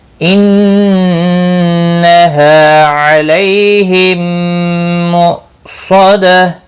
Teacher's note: حمزہ ساکن کو جھٹکے کے ساتھ پڑھیں گے